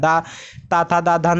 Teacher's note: सारे जीभ जो है दांत पे टच हो रही है।